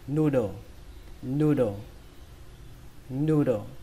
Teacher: Từ đầu tiên, trọng âm của nó rơi vào âm đầu tiên, âm nu. Âm thứ hai các bạn xuống giọng đọc là đồ. Chữ đồ này giống như trong chữ đồ đạc của tiếng Việt, các bạn lấy chữ đồ đó. · Ở đây chúng ta ghi hai chữ O và cách đọc của nó là âm U. Âm U ở đây các bạn hơi kéo dài nó ra một chút